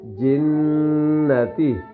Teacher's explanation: جن 1 سیکنڈ کے برابر ناک میں چھپائیں گے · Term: غنہ